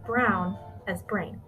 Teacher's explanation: there's also a fronting of the au diphthong as a an example would be brown as brain there are